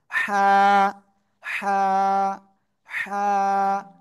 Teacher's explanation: গলাটা চেপে হালকা মুখ দিয়ে বাতাস বের করে করে এক আলিফ টেনে উচ্চারণ করতে হবে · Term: হা অক্ষরটা